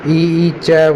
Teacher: इ ई च वर्ग य से ये तालु से हो गए